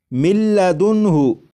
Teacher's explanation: लिखा हुआ है मिन, लेकिन जब नून को लाम में इदगाम करेंगे तो नून की आवाज़ ख़त्म हो जाएगी और मीम के बाद फिर लाम की आवाज़ आएगी और यहाँ पर जब इदगाम करेंगे तो गुन्ना भी नहीं करेंगे।